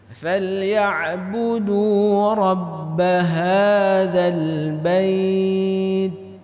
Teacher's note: Huruf ta ini di antara huruf yang diucapkan berangin. Tapi akan sangat terasa ketika dia disukunkan.